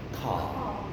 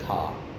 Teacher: The tongue goes down. It doesn't get close to the palate.